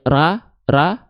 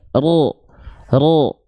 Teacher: tapi ketika pangkal lidah diangkat ya jadi tebal ya yang asalnya ra ra pangkal lidahnya naik ro ro dia tanpa memonyongkan mulut